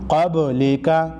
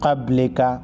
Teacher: زبر قبل لام زیر لی قبلی کاف زبر کا قبلی کا با ساکن کو ہلا کر پڑھیں گے